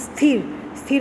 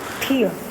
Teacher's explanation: इसमें दंत्य ध्वनियाँ मूर्धन्य हो जाती है, जो दांतों के बीच में जो बोली जाती है, जिनको बोलने पर दांतों का स्पर्श होता है।